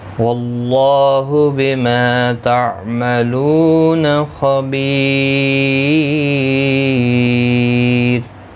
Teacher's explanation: وقف کی صورت میں را ساکن پڑھا جائے گا، باریک بھی پڑھا جائے گا